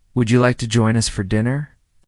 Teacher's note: the question with a rising tone